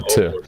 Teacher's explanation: Reducimos to a una O corta